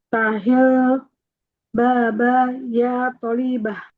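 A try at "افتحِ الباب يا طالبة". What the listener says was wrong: Nah, tonya panjang. Iftahil baba ya talib.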